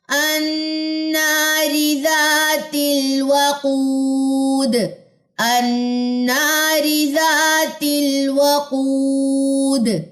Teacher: واو مد کو 2 کاؤنٹس لمبا کرتے ہیں. دال کی زیر کو ڈراپ کریں وقف کی صورت میں، اور دال پہ آ جائے گی جزم، اور دال جزم کلکلا لیتا ہے · واو کی زبر کو لمبا نہیں کرنا، او کو لمبا کرنا ہے